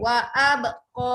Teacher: Kita memang pakai wa abqa. Qa tu tetap dua. Qa tu kawan dengan alif. Jangan baca qoi.